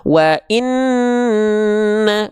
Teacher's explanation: annya itu ditahan dengungnya selama dua dua harakat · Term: gunah